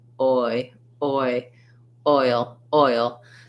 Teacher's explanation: we don't end up with an ah in oil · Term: glide of oi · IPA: /ɔɪ/